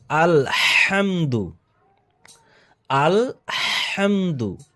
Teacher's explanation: এখানে বড় হা রয়েছে কণ্ঠনালী থেকে হাটিকে উচ্চারিত করতে হবে